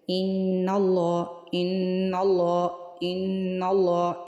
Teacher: زبان اوپر تالو کے ساتھ چپکی ہوتی ہے، اور آواز جو ہوتی ہے نا وہ ہماری ناک میں سے نکل رہی ہوتی ہے، ٹھیک ہے۔ ان اللہ، تو یہ ہو گیا نون مشدد کے اندر غنہ، ٹھیک ہے۔